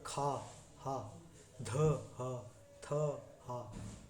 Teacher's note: महाप्राण जैसे जो कि एक ही श्वास में हा की ध्वनि देते हैं